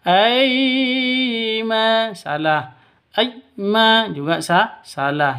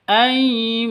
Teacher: ai sifat lin lentur lemes, tidak boleh disentak, tidak boleh dipanjangkan.